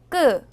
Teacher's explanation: 된소리는 바람이 하나도 안 나오도록 발음합니다 · 끄는 목에다 힘을 주고 그 소리를 내요. 끄는 그를 두 번 겹쳐서 씁니다.